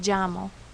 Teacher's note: there are some areas where the ella actually makes a J sound, or English J sound, an English J sound.